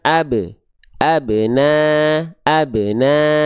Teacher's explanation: kalau dia berada pantulannya di tengah kalimat atau bukan pada saat berhenti namanya qalqalah suguro. Jadi, pantulannya ringan saja ya.